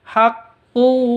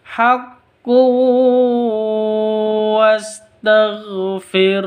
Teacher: tanwin bertemu dengan wau cara bacanya masuk ke wau langsung